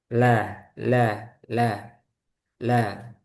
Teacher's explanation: Huruf lain tidak memiliki. Untuk lam dia menyimpangnya ke samping. Jadi suaranya itu lewat samping. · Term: inhiraf